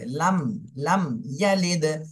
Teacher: মিম সাকিনের পরে বা আর মিম এই দুইটা হরফের কোনোটাই নেই, এজন্য এই মিম সাকিনে স্পষ্ট করে পড়তে হবে।